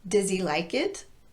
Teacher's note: not only is the does reduced to dis but the initial h on he is not pronounced as we link it to does